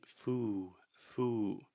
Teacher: she is creating too much of a circle with her mouth at the end of the word, which is creating that ooh sound. In linguistics, we call this lip roundedness.